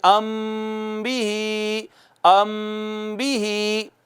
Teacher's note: جب میم ساکن کے بعد صرف با آئے گا، ایک ہی حرف، ایک حرف، ایک حرف، زیادہ نہیں، تو میم ساکن پر آواز کو ایک الف کے برابر چھپا کے پڑھیں گے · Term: اخفا